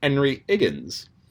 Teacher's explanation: the Cockney accent drops the H, so it's Henry Higgins.